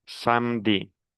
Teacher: Samedi, Le E, je ne le prononce pas. On prononce samedi.